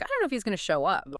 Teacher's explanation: I don't know. It becomes that quick dunno, and if he is going to, contracts naturally to if he's gonna. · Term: contractions